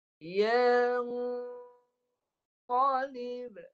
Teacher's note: Nun mati bertemu qaf. Pangkal hidung dan qaf tebal, pangkal lidah naik, bagi tebal. Dengung tebal.